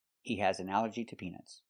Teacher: And the connector is to, pronounced tuh.